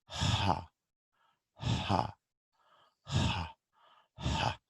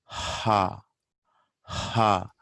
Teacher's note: ha is glottal. So we stop the airflow at the glottis itself.